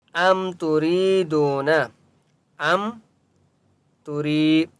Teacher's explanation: را کو ایک الف کی مقدار کھینچ کر پڑھیں گے اور را کو بریک پڑھیں گے